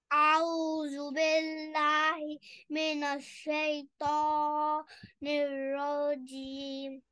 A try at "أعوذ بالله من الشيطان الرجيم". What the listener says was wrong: नहीं, तो को ज्यादा लंबा नहीं करें, एक सेकंड बस लंबा करें. रॉ को बिल्कुल भी लंबा नहीं करना. रॉ जबर, रॉ फतहा, रॉ, बस दैट्स इट. अऊज़ु बिल्लाहि मिनश्शैतानिर रजीम.